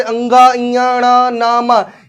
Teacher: ये आपके नासिक की ध्वनियां होती है, और सघोष अल्प प्राण भी होते हैं